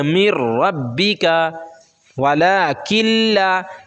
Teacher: لام اور را میں جو ہے ہم کو صرف ادغام کرنا ہے، غنہ نہیں کرنا ہے